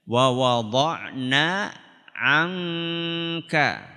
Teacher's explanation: Kalau yang angka samarnya di tenggorokan.